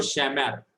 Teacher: The syllable stressed is last syllable. Sha, one syllable, and mar, that is last syllable. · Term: milra